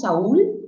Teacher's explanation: una vocal abierta con una vocal cerrada y el acento está en la cerrada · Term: hiato acentual